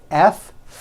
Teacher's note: the F sound, where you're biting down on your lower lip.